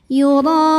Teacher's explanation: huruf ra dibunyikan secara tafkhim karena berbaris fathah, maka dibacanya tebal, pangkal lidah angkat. Yura, ra mad wajib muttasil karena ada mad tabi'i bertemu hamzah dalam satu kata.